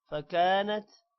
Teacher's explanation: فکانت کاف کے بعد الف ہے اس کو بھی لمبا کریں گے